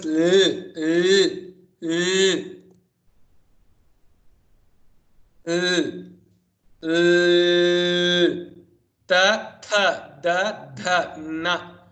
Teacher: when the tongue touches the teeth, it produces ta, tha, da, dha, na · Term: danta